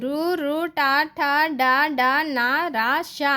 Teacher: నాలుకతో గట్టిగా అంగిల్ని తాకుతూ పలికే అక్షరాలు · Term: మూర్ధాన్యాలు